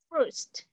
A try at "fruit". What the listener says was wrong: Chúng ta sẽ học về fruit. Fruit. Chữ R nha, không phải food. Fruit là đồ ăn, còn fruit.